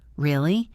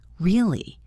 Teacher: If you say it with a rising intonation, really, it means you are surprised or you are asking for more information. But if you say it with a falling intonation, really, it means you are skeptical or you don't believe the person.